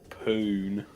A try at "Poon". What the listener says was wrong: It's not poo, it's poon. Didn't quite hit the N the first time.